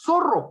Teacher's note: se produce este sonido entre los dientes interdentales entre los dientes ya no la parte interna sino esto va a ser entre · el ápice de la lengua se coloca entre los bordes de los incisivos superiores y de los incisivos inferiores